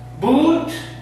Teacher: Producido en la parte trasera con la boca redondeada.